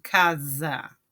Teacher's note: Aqui, eh, o S, ele tem o som do Z, né? Zeta, que é aquele som assim, tipo do zancudo, né?